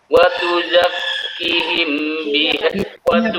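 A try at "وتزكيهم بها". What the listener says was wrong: panjang. Kinya panjang. Watu zakihim Adalah tempo nih Pak ya. Tempo bacanya ya. Nah, jangan ada diperlambat sedikit. Ya, diperlambat sedikit itu satu.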